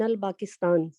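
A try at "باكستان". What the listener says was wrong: با نہیں ہوتی عربی میں، با ہوگی. یہاں پر بھی پے نہیں آئی، بی آئی، بے آیا ہے نا.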